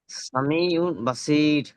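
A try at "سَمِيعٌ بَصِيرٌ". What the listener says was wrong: ওমটা গুন্না দিতে হবে, সামি ওম বাসির।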